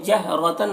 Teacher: جہرتن را کو پر پڑھیں گے، تنوین میں اخفا ہو رہا ہے، تنوین کی آواز کو ناک میں چھپا کر پڑھیں گے